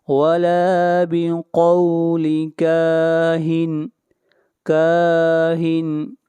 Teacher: کاف کو کھینچ کر پڑھیں گے، ایک الف کے برابر، یہاں پر بھی الف مدہ ہے۔